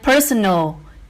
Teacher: personal is stressed on the first syllable